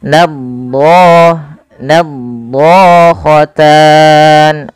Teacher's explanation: lidah melekat-lekat dengan langit-langit atas maka dia menebal. Nad nadatan do panjangnya dua harakat karena ia mad thbi'i.